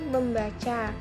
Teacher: Contohnya, proses penyembuhan prefiks me pada kata dasar baca, maka akan memunculkan bunyi sangau m yang awalnya tidak ada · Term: pemunculan fonem